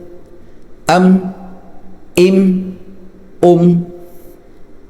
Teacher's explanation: मीम को लंबा नहीं करना अम इस तरह नहीं करना अम मीम बंद हो जाए आवाज बंद हो जाए मीम की · میم بند ہو جائے، آواز بند ہو جائے میم کی